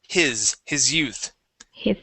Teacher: that's going to be a voiced s